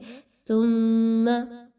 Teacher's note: سین اور صاد کی طرح سا کو نہیں پڑھا جاتا بلکہ زبان کو تھوڑا سا باہر نکالیے، سا کی ادائیگی اس وقت ہوتی ہے۔